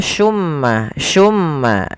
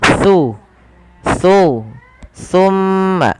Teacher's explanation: Huruf sa ini tempat keluarnya adalah ujung lidah bertemu dengan gigi seri atas. Jadi ketika kita melafalkan sa, pertemukan antara lidah kita, ujung lidah kita dengan gigi seri atas.